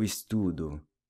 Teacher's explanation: The ‘’o’’ is pronounced /u/ as in ‘’new’’.